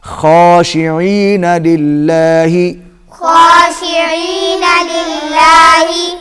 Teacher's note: اللہ کے لام سے پہلے زیر آ گئی تو یہ باریک پڑا جائے گا۔